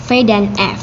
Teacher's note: konsonan labiodental ini merupakan pertemuan antara bibir bawah dan Gigi atas bibir bawah sama seperti bilabial tadi bertindak sebagai artikulator sedangkan gigi